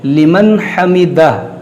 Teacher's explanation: نون ساکن کے بعد ہا ہے حرف حلقی، یہاں پر اظہار ہوگا لمن حمدہ اور اس الٹے پیش کو ہم ساکن کریں گے کیونکہ یہاں پر وقف ہے.